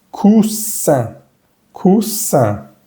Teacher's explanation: La E-S se pronuncia S, queda cus, cus. Y la I-N, que la vamos a ver más tarde, es una vocal nasal, va a sonar sonriendo.